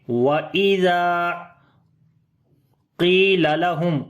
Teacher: قاف کو موٹا پڑھیں گے لیکن اس کے نیچے زیر ہے تو اس کی موٹائی کم ہوتی ہے